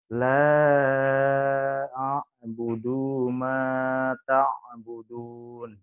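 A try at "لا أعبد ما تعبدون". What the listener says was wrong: Ya, A-nya kurang jelas ya. Jangan langsung ke A-in, A-nya jelas dulu.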